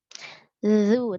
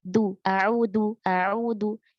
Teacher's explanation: Ujung lidah Ujung dikeluarkan sedikit di gigi seri atas. Ya, ujung lidah bertemu dengan ujung gigi seri yang atas. Berarti posisi lidah itu agak sedikit keluar, ya. Zu, tapi disentuhkan saja, jangan ditekan, ya. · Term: huruf zal